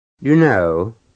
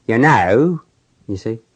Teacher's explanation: I think of the diphthong as being sort of a S on its side, and with the British it's like a long S. With the Cockney, it's a little shorter, more abrupt.